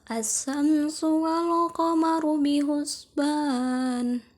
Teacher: Hukum tajwid yang terdapat pada ayat ini adalah 1. Alif lam samsiyah pada asyam sehingga huruf lam dibaca melebur. Yang kedua, alif lam qamariyah pada walqa sehingga huruf lam dibaca jelas.